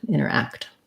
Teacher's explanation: This act is a black cat vowel like ah. And also interact has last syllable stress. So quick on the inter or inner and longer on the act